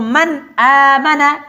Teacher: اگر نون ساکن یا تنوین کے بعد ان 6 حروف میں سے کوئی حرف آ جائے تو نون کو ظاہر کر کے پڑھا جائے گا اور تنوین کو بھی ظاہر کر کے پڑھا جائے گا، ناک میں آواز نہیں لے کے جائیں گے، کسی اور حرف سے تبدیل نہیں کریں گے۔ مثال کے طور پر یہ ہے من آمن، میم نون زبر نن، یہاں نون ساکن ہے اور اس کے بعد حروف حلقی میں سے حمزہ آیا ہوا ہے، تو لہذا جب ہم یہ پڑھیں گے تو من آمن نون کو بالکل ظاہر کر کے پڑھیں گے، اس کو اصطلاح میں کہا جاتا ہے اظہار۔